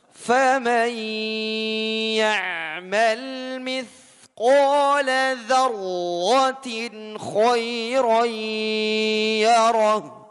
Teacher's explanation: Khairoi itu kan khairon yarah. Fathatain bertemu dengan ya. Ya idgham bi gunnah juga. Khairoi ditahan dulu.